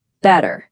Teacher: We call it a flap T. But in Indian English, it stays a hard T